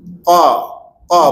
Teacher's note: Kalau qaf pakai lidah ni kita angkat. Kita angkat rapat ke langit lembut ni. Qa qa belakang tu.